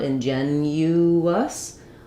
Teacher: a hidden w sound as we move from that rounded uh to the unrounded us. Inuus, we're going to have that w sound connecting them.